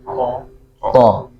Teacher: Tapi kalau to itu tertahan ya. To nafasnya tertahan dan menempel di langit-langit atas.